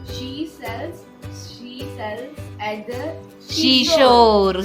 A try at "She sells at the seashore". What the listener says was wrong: सीसो नहीं शीसो. प्रोनाउंसिएशंस.